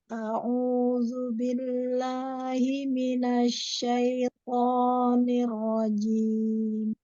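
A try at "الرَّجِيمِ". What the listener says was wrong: Ini rajim, rohnya buru-buru cepet ya. Ada tasdid, ada dilamain ya. Ar-rajim.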